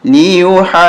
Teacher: ہا جیم واو پہ جو جیم پہ تشدید ہے اس لیے ہا کو کھینچتے ہوئے جیم کے ساتھ ملانا ہے اور جیم پہ سختی کے ساتھ پڑھنا